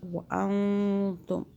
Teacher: نون ساکن پر ہم نے اخفا کیا، یعنی کہ زبان تالوس ٹچ نہیں ہونے دی۔